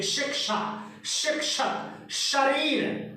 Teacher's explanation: तो चा जहां से बोलते हैं वहीं से ये तालव्य श बोला जाता है